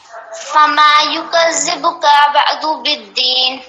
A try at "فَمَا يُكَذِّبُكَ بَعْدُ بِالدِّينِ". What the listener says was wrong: آپ نے اس بار کا کو کھینچا تھا. یکذبک کا جو کاف ہے اس کو کھینچا تھا.